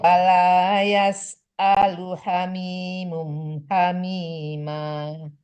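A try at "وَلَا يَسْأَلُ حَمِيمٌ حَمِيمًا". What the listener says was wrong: Ya, kalau hamimun itu izhar harus jelas ya, bun on doang ya. Wala yas'alu hamimun. Ya, hamimun hamima. Jadi tanwinnya harus jelas. Jangan ada samaran ke huruf yang di depannya.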